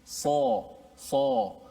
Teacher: Pangkal lidah kita terangkat. Dia daripada dalam, bukan daripada mulut. Ramai juga yang menyebut bila sebut sa dia sebut so dengan mulut. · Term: sifat yang tinggi